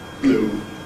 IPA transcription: bluː